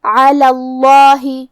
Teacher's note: کلمت علی کے بعد لفظ الجلالہ ہے، مطلب کلمت اللہ. یہاں بھی ہم لفظ الجلالہ کے لام کو موٹی آواز میں پڑھیں گے